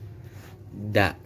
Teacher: makhrajnya punggung ujung lidah dan pangkal dua gigi seri muka yang atas, hurufnya da atau dal.